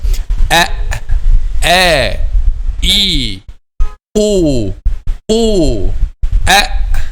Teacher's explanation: throat, okay, is the point of articulation of the letter Hamza, and from this part we pronounce letter Hamza.